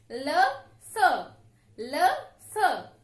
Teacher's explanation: इनका उच्चारण करते समय जो हमारी जीभ है वो दांतों का स्पर्श करती है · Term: दंतव्य व्यंजन